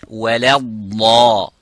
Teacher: The dad is mufakham, but not the lam.